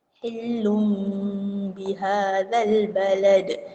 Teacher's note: Itu dipanggil iqlab. Tanwin ataupun nun mati bertemu dengan ba, iqlab. Jadi dia tukar kepada bunyi mim.